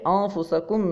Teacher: نون ساکن کے بعد یا تنوین کے بعد حروف اخفا میں سے اگر کوئی حرف آ جائے تو اخفا ہوتا ہے، یعنی نون ساکن کو چھپا کر پڑھتے ہیں